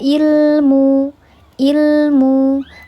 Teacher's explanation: lamnya dibacanya jelas ditahan dua ketukan dibaca jelas ditandai dengan ada sukun di atas huruf lam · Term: lam qamariah